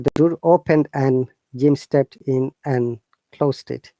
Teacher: the natural way the and should be pronounced only n, not and. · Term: connected speech